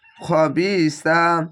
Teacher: খা হবে না খবিসা এটি সা তা এর পাশে সা আছে হালকা জিবা বের করে হবে সা